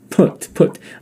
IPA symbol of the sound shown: ʊ